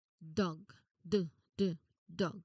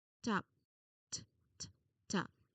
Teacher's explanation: dog d d dog top t t top For dog, your throat should be buzzing the moment your tongue touches the roof of your mouth. For top, your throat should stay completely quiet until you have already finished the consonant